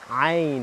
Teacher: عربی عین از ته حلق تلفظ میشه